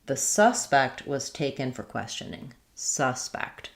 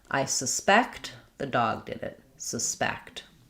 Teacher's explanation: So, noun, first syllable stress, verb, second syllable stress.